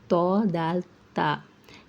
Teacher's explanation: जबान की नोक ऊपर के दांतों की जड़ को लगने से अदा होता है। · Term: हुर्फ नतैया